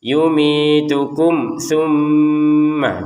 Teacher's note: mim sukun bertemu tsa ya. Kita baca dengan jelas.